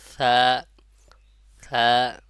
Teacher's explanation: সা সা, এটা নরম টাইপের হবে। জিহ্বার আগা উপরে যে দুই দাঁত আছে এই দুই দাঁতের আগার সঙ্গে লাগায় উচ্চারণ হবে এবং এক আলিফ পরিমাণ টান হবে।